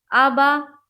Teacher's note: ابویہ، حمزہ زبر با زبر با، ابا، واو یا زبر وی، ہا زیر ہی، ابویہ، ابا، حمزہ با دونوں کے اوپر زبر کی حرکت ہے، زبر کو جلدی پڑھے، تھوڑا بھی نہ کھینچے